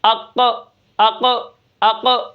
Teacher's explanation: یہ جو آواز آخر میں آ رہی اس کو قلقلہ کہتے ہیں، جنبش، حرکت، ٹھیک ہے؟ سکون کی حالت میں ہے۔